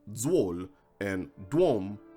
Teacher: T and ts become d and z when they precede a w. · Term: alveolar obstruent voicing